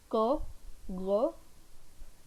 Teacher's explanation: is when you produce these sounds go go at that time this back of the tongue is raised and it goes in contact with the soft palate it goes up it comes in contact with the soft palate